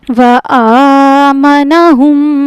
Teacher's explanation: کھڑے زبر کو کھینچیں گے ایک الف کے برابر